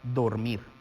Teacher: la sílaba tónica es la última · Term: aguda